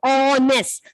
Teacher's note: Even though it starts with H, I told you here, H is silent.